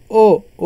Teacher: ओ जो है तो हमारा ओ, अ प्लस ऊ से मिलकर के बना है। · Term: संयुक्त स्वर